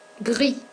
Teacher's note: Pour les masculins, no pronunciamos la S